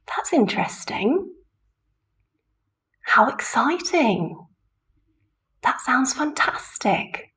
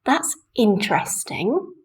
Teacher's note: adjective we're using a Rise full intonation for example that's interesting it's really the voice is going very high